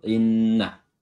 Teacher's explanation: tasydid ditahan ya, tidak seperti tasydid biasa karena di situ mengandung dengung dan durasinya diperlama.